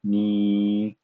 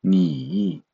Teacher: So before adding the tongue, it will be ni, so very flat pronunciation, and after adding the tongue, it will have a tone like a falling and rising tone. The third tone, it will be ni.